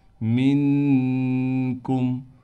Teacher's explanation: نون پر اخفا یعنی غنہ کریں گے، کاف کو باریک کر کے پڑھیں گے، میم پر بغیر غنے کے پڑھا جائے گا۔